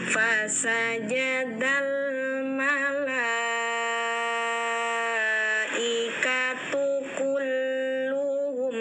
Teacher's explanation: ini mim sukun bertemu hamzah. Ini bacanya jelas tidak dengung, idhar syafawi